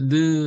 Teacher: 혓소리, 설음이라고 그죠? 혓소리, 이것은 혀 끝에 윗니에서 닿는 모습. 발음은 느라고 부르죠.